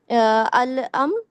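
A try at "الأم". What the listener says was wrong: Confuse हो रही है चचा वाला, वो ये वाला है वो है वो आइन से है अम्मुन चचा, लेकिन उम्मुन अम्मी, अलिफ पे पेश रहेगा इस पे ना, तो रहेगा।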